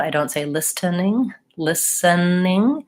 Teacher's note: we pretty much don't say that T sound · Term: the T is silent